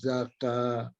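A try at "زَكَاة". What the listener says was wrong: Dipanjangkan lagi. Zakat.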